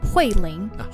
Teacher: so it's fourth tone and second tone